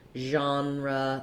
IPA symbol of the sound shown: ʒ